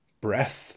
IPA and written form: breθ (breath)